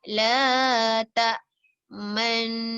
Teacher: kita memoncongkan bibir kita, dua bibir kita tanpa suara.